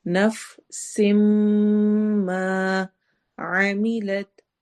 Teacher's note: نفسم میں میم غنہ کے ساتھ ہے اور یہاں پر ادغام ہو رہا ہے